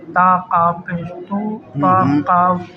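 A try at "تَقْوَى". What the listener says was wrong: زبر، زبر، زبر، نہیں قاف زبر ہو گیا نا، واو یا زیر،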